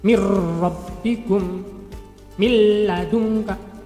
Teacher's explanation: Nun mati dimasukkan ke huruf ro, nun mati dimasukkan ke huruf lam. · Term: idgham bila gunnah